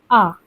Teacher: इस स्वर के उच्चारण में मुख द्वार पूरा खुला होता है। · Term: विवृत